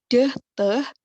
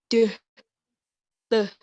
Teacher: itu diproduksi karena menempatkan lidah di alveolar ridge. Deh, teh.